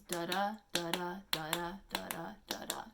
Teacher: it's 5 feet, and it is unstressed, stressed, unstressed, stressed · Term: iambic pentameter